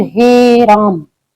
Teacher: इनका उच्चारण करते समय दो से ज्यादा मात्रा मात्रा का समय लेते हैं। तो इस वजह से इनको हम प्लुत स्वर कहते हैं।